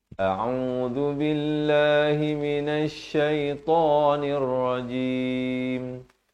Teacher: A di pangkal, ain di pertengahan kerongkong, dal di hujung lidah. Lafaz jalalah dibaca nipis 2 harakat.